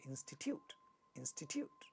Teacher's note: the first syllable is stressed · third syllable has a ta sound in the beginning of the syllable but it is not getting aspirated because this is not a stressed syllable